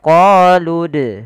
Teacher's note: Apabila ada huruf Dal berharakat sukun maka ia kita baca dengan bacaan Qalqalah harus memantul